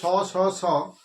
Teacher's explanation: এদেরকে আবার শীষ ধ্বনি বলা হয়, কারণ একটা শীষ শীষ শব্দ আসছে বলে